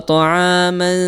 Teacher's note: Maka bunyinya itu tipis, ya. Ya, suara dengungnya juga terdengar, suara samar di mulutnya juga terdengar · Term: hukum ikhfa